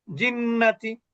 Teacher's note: কিন্তু এখানে তো গুন্না হবে। তাহলে কি পরিমাণ গুন্না হবে? এক আলিফ মাদের সমপরিমাণ